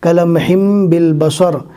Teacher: تنوین کو میم سے بدل کر پڑھا جاتا ہے